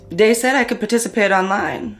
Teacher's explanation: using something like a D sound for where you see a written TH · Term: TH stopping